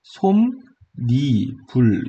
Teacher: 그렇기 때문에 이때는 니은 첨가 조건을 만족시킵니다. 그럼 미음이 다음 음절로 올라가는 게 아니라 그냥 솜, 니, 불 요렇게 발음되는 거겠죠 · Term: 니은 첨가 현상